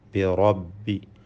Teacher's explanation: റാഇനെ തഫ്ഖീം ചെയ്ത് പെരുപ്പിച്ച് സ്വരഭാരത്തോടെ ഉച്ചരിക്കേണ്ടതാണ്. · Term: റാഇൻ്റെ തഫ്ഖീം